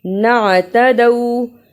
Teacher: عین کی صحیح آواز نکالی، تدو میں دال کو واو سے ملایا تو آواز نکلی دو۔